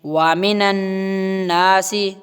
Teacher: النون کو نون سے ملانا اور گنہ کرنا ہے